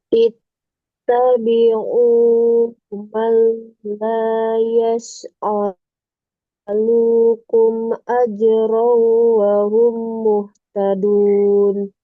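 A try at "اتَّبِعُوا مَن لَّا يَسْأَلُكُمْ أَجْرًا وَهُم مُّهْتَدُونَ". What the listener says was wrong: Nah, ini ada yang kurang. Yang kurangnya itu mendengung. Yang pertama, ajraw. wahum. Sama humnya kurang.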